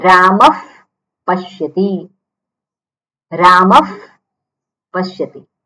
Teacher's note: હવે પકાર ફકારથી શરૂ થતો શબ્દ હોય તો શું બોલાય ફકાર થઈ જાય